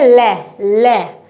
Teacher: उच्चारण में हवा जीभ के पार्श्व से निकलती है। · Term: पार्श्विक व्यंजन